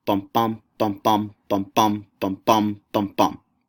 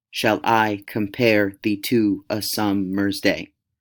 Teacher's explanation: The sound of iambic pentameter sounds a lot like a steady heartbeat, so it sounds kind of like bum bum bum bum bum bum bum bum bum bum. The first syllable of each foot is unaccented or unstressed, and the second is always accented or stressed. So in iambic pentameter, you will have lines that consist of 5 iambic feet, which is 10 syllables long, and each line will have 10 syllables, 5 unstressed and 5 stressed syllables.